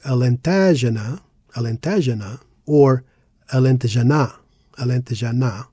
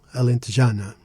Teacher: It's a 5-syllable word, and we put the stress in já. Why? Because that's the penultimate syllable, the one before last, and there's no accent on the word.